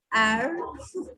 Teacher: R will be throat, say air. Just focus on that.